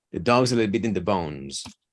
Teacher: where you lean on the phrase is on dog and Bones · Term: emphasis